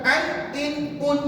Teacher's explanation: Hujung lidah, makhraj dia, makhraj hurufnya, makhraj huruf, hujung lidah ditekan ke gusi atas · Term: bunyi nun mati